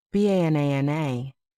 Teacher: in the word banana, the stress is on the second syllable, banana. Paying attention to stress makes your English sound clearer and more natural.